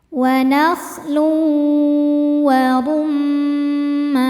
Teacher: Berikutnya ada idgham bighunnah karena ada tanwin dhommah menghadapi huruf waw. Cara bacanya tanwin dimasukkan ke waw disertai dengungan.